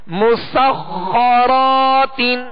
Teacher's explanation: سین کو باریک پڑھنا ہے، سین میں سیٹی کی آواز پیدا ہوگی